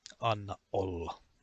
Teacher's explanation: you shut your glottal and hold your breath. And when you say the second word, you open your glottal and let the word out. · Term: glottal stop